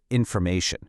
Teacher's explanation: The main event is on ma. That's the primary stress. But in at the beginning gets a little bit of love too.